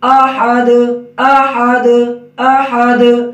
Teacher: اب حمزہ کے اوپر زبر ہے، یہ موٹا نہ ہو، آ کی آواز نہ ہو